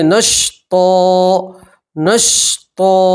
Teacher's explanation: 2 زبر کی تنوین کو الف اور زبر سے بدلیں گے